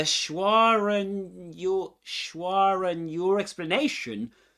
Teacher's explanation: Schwa and your explanation is a perfect example of the intrusive R sneaking in. The R links the two vowel sounds together, making the speech flow smoothly.